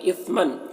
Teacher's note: اثمن من کے تنوین میں اخفا ہو رہا، تنوین کی آواز کو ناک میں چھپا کر پڑھیں گے۔